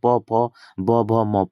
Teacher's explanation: प फ ब भ म ये सब क्या आएंगे? ओष्ठ से आएंगे।